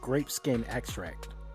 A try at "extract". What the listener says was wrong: You said grape skin abstract. Extract.